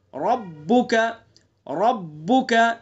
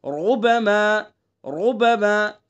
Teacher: زبر ہے، تو اس لیے اس را کو کیسی پڑھیں گے؟ پر کر کے پڑھیں گے، منہ بھر کے